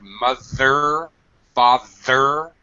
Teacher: please be careful of the voiced th sound mother father stick your tongue out